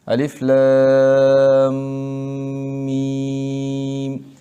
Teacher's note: لام میم ساکن کے بعد حرف میم آیا، ادغام صغیر مثلین ہو گیا تو میم مشدد بنا